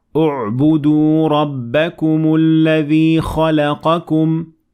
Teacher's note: when I started at it, I pronounced Hamzat Wasl and I added Dhamma on top of it because the third letter, the word U'budu, the ba has Dhamma on top of it, so this means that we will say U'budu.